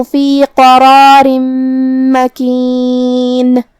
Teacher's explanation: کلمت قرار میں یہاں حرف القاف ہے. قاف کو ہم زبان کی جڑ اور تالو کے نرم حصے سے ادا کریں گے، جو کہ قاف حروف التفخیم میں سے بھی ہے، تو ہم قاف کو بھاری آواز میں پڑھیں گے.